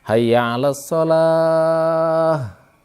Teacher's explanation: Hamzah dan ha di sini di bawah di ujung tenggorokan ha bukan dari dada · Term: huruf ha